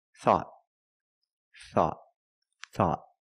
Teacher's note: at the end the tongue goes up and makes a stop